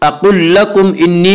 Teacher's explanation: انی نون مشدد غنہ ہوگا، 1 الف کی مقدار غنہ کریں گے